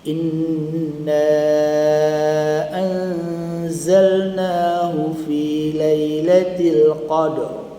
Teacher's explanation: Qadr getaran ra ada tapi dia tafkhim